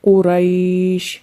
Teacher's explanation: مد لین عارض میں جیسا کہ آپ کو بتایا کہ اس میں قصر کرنا بہتر ہے، یعنی 1 الف کے برابر اس کو کھینچنا بہتر ہے